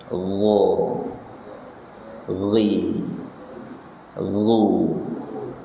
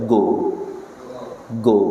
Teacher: Ghain letaknya di tenggorokan paling atas. Istilahnya adna al-halqi bersama kho. Bukan seperti huruf G Indonesia.